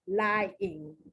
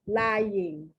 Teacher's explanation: Some people say lying, and they don't pronounce the Y at all. Other ones say lying, and the Y is pronounced like the ya, like it's a consonant